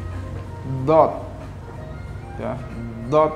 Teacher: lidahnya diantara dua gigi tapi agak masuk lidahnya sambil keluarkan udara sambil keluarkan udara cuman sebelum dikeluarkan udaranya ditahan di dua pipi